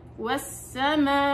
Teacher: وانت بتوقفي على الهمزة ارجعي الى موضع الهمزة او مخرج الهمزة اللي هو الحلق